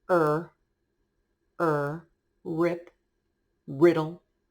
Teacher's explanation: we don't make that trill roll sound with our r it's just er er